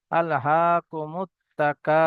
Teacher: কাফ আলিফ জাবার কা, আল হাকুমুত তাকা। এখানে আলিফ মাদ্দা, এক আলিফ পরিমাণ টান দিতে হবে